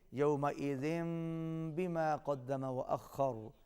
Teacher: یومئذ بما اقلاب ہے، یہاں پر بھی آواز ناک میں جائے گی۔ آپ دیکھ رہے ہیں کہ چھوٹی میم ہے، اس کے ساتھ ذال کو ملائیں گے۔